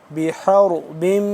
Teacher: حا زبر حر را کو موٹا کر کے پڑھیں گے اور اس ہا کو دوسرے جو دو آنکھوں والا ہا ہوتا ہے اس سے جدا کر کے پڑھیں گے اس کو درمیانی حصے سے حلق کے